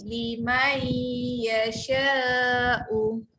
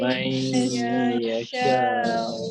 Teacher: Li, jangan baca man, baca mai. Masuk bunyi ya